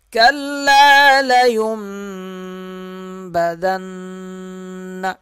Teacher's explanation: ذال نون سے سختی کے ساتھ ملے گا اور یہاں غنہ کیا جائے گا۔